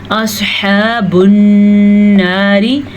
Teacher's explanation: नून का गुन्ना भी आपने ज़रूर अदा करना है। जब नून के ऊपर शद हो या मीम के ऊपर शद हो, दोनों सूरतों में गुन्ना होता है, नाक में आवाज़ चली जाती है, रुक जाते हैं हम उस हर्फ के ऊपर, इसी को गुन्ना कहते हैं। · अस्हाबुन नारी, स्वाद को पुर पढ़ना है क्योंकि स्वाद उन हरूफ में शामिल है जिनको पुर पढ़ा जाता है। हा के तलफ़्फ़ुज़ का ख़ास ख्याल रखना है क्योंकि हा हलक के दरमियान वाले हिस्से से निकलता है। अगर इसको आप खा पढ़ेंगे या हा पढ़ेंगे तो आपने हा की शक्ल ही बदल दी।